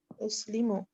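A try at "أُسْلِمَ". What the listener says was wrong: uslima. can never be uslimu. It will always have fatha in the end on the huwa version.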